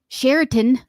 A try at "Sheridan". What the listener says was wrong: No, there's no T. It's Sheridan. It's not Sheraton.